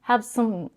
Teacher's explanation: She reduces the cup sound to a schwa.